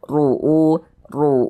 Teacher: Tebalkan huruf rnya ru ru kemudian u dibaca panjang. Nah, ini namanya adalah mad badal. · maka huruf ro dibaca tabkhim dibaca tebal